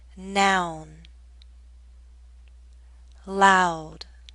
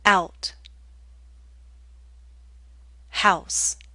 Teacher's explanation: you'll see movement from a more open position to a more closed position. This time we're moving from around here to here. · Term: ow